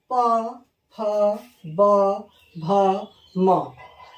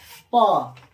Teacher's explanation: प फ ब भ म, यह हो गया पवर्ग। ये होठ से बोला जाता है। जैसे हम लोग बोलते हैं प, होठ आ गया।